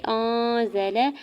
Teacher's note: حمزہ کے زبر کو نون ساکن کے ساتھ ملاتے ہوئے اخفا کریں گے۔ زا کے زبر کو لام کے زبر کو بغیر کھینچے ہوئے ادا کرنا ہے۔